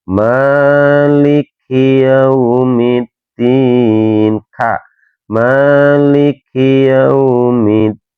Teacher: Ini huruf ka biasa. Emang ka ini salah satu termasuk dari huruf hamas teman-teman ya, yang mengeluarkan angin ketika dibaca.